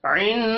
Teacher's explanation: हा के ऊपर उल्टा पेश है, एक अलिफ के बराबर खींच कर पढ़ेंगे।